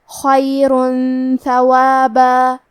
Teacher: ثا حروف الاخفاء میں سے ہے، تو ہم یہ حکم کو غنہ کے ساتھ ادا کریں گے · حرف الثا کی ادائیگی زبان کے سر اور اوپر والے دانتوں کے اندرونی کناروں سے ہے